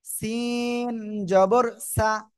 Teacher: এটা হলো নরম আওয়াজে জিহ্বার আগায় এই উপরে দুই দাঁতের আগায় লাগবে, এরকম। আর এটা দুই দাঁতের আগায় লাগবে না, নিচে দুই দাঁতের পেটে লাগবে